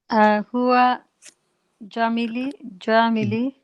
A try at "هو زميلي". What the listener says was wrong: It's a zai, not a jim. Zamili. Huwa zamili.